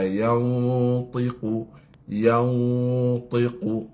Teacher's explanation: ta ni huruf itbaq. Huruf yang kena ikhfa secara mufakhamah yang tebal.